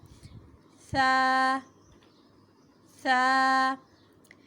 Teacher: زبان کی نوک سامنے کے دانتوں کے کنارے سے ٹکرائے گی اور نرمی سے ادا ہوگا